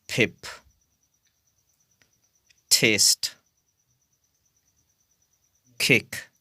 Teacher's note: position in a soluble they have to be aspirated it means they have to be pronounced with a puff of sound